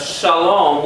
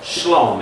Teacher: One of the vowels is dropped, and instead of shalom, we have shlom.